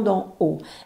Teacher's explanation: la consonne d par exemple se prononce en donnant du bout de la langue au-dessus des dents